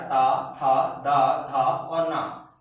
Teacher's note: जब हम इन 5 वर्णों में से कोई सा भी एक वर्ण बोलेंगे तो हमारे जो दांत हैं वो एक दूसरे को छूते हैं, इसीलिए हम इनको दंत व्यंजन कहते हैं।